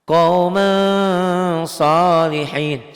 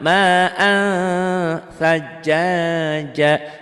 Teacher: Ditulisnya ada N-nya, dibacanya N-nya tambah G. Disertai ditahan. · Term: ikhfa